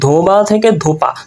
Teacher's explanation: আর ধোবা থেকে ধোপা, দেখেন এই যে ব শেষে সেটা কিন্তু প হয়ে গেছে, অর্থাৎ ব্যাপারটা হচ্ছে কিন্তু এখানে ব্যঞ্জন ধ্বনির বিকৃতি সাধন হয়েছে, যে বটা পরিবর্তন হয়ে প হয়েছে, অর্থাৎ বয়ের বিকৃতি মানে বয়ের পরিবর্তন, সেটা কিন্তু প হয়ে গেছে। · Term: ব্যঞ্জন বিকৃতি